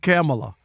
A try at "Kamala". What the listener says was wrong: Why are you adding an extra syllable, both y'all? Kamala. Not Kamala or Kamala. Kamala Harris.